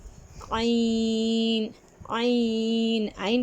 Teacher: بدل جاتی ہے، زو، عین، عین، عین کہاں سے نکلتا ہے، درمیانی حلق سے عین کی آواز نکلتی ہے